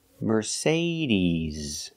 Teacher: put the stress on the second syllable Mercedes remember it's not Mercedes it's Mercedes use a long e